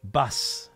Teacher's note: In both kana, the u is usually very silent.